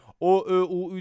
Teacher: o ö u ü dediğimde de ağzım yuvarlanmıyor mu evet yuvarlak